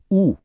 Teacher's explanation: ऊ बोलकर देखें, होंठ एकदम गोल हो जाते हैं